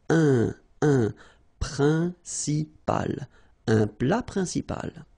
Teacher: En, remember, it's nasal, it goes in your nose.